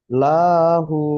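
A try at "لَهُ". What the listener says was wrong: লা টান হবে, লা টান হবে না, লাহু।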